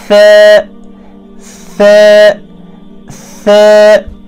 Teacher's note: ثاؤک مخرج چھِ زبان کی نوک اور ثنایا الیہ کا کنارہ